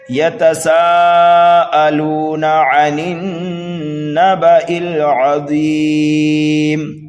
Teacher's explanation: ہم جب ملا کر کے پڑھیں گے تو لام کو 1 الف کے برابر کھینچیں گے، اور نون متحرک ہونے کی وجہ سے جلدی پڑھا جائے گا